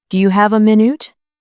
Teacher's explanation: The stress is on have and minute.